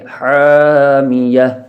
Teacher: یہ ہا حروف حلقی میں سے ہے جو کہ حلق کے درمیان سے ادا ہوتا ہے